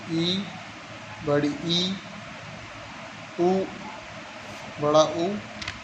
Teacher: इनके उच्चारण में जीभ नीचे से ऊपर उठती है, यानी नीचे जीभ रहती है, नीचे से ऊपर।